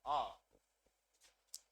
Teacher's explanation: केवल दीर्घ आ एक मात्र ध्वनि ऐसी है जो कि विवृत है यानी कि जिस स्वर के उच्चारण में मुख द्वार या मुख विवर जो होता है यह पूरा खुल जाता है